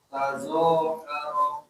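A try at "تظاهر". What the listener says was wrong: Pakai dha, jangan za. Tadha.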